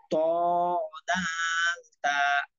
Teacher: 11 নম্বর মাখরাজ জিহ্বার আগা সামনের উপরে দুই দাঁতের গোড়ার সঙ্গে লাগাইয়া